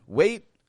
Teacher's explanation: It's real quick. The T stopped. You notice I'm not saying wait.